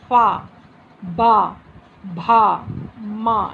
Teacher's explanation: होठों को आगे से दोनों को मिलाते हैं · आप जब पा बोलेंगे तो दोनों होठ, आगे के दोनों लिप्स आपके एक साथ जुड़ जाते हैं।